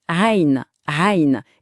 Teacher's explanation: il y a ce fameux son ayn qui vient du fond de la gorge, c'est très typique de l'arabe